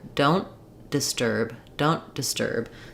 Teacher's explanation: the N will be very short you won't hear the T don't I'll just release that t on the D of disturb · So rather than don't disturb, you can hear how that breaks the flow. I'm going to use an unreleased T here. · The turb of disturb is going to be the longest part of the phrase, and then the rest will be a little bit shorter. Often for the word don't, we don't say the t sound, and this especially when it's followed by another consonant sound.